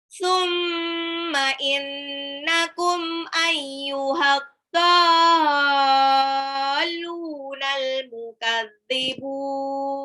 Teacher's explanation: Summa mimnya tasdid gunnah. Innakum nunnya juga tasdid gunnah.